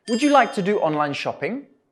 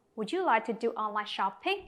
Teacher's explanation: can you hear the rising intonation again at the end of the question the question starts with the word would so our voice goes